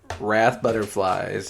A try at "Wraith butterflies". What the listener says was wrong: butterflies. There's an I in Wraith that is not in Wrath. Wraith. I don't think so.